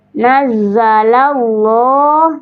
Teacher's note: Di sini ada lafzul jala lah dibaca tebal atau tafhim